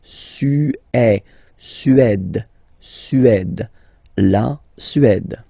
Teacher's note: Remember, accent grave, it's really open.